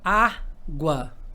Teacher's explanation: porque o u é semivogal o a é vogal o a é sempre vogal quando se trata aí do ditongo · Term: ditongo crescente